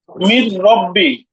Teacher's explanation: গুন্না ছাড়া র মিলাই র পড়তে হবে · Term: ঈদগামে বেলা গুন্না